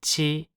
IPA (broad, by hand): tɕi